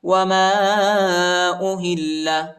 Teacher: الف پر چھوٹا مد آیا ہے، اس کو تقریباً 2-3 سیکنڈ تک کھینچیں گے اور ہا کو لام کے ساتھ ملائیں گے، ٹھیک ہے، لام پر شد آیا ہے اور لام کو شدت کے ساتھ سختی کے ساتھ پڑھیں گے۔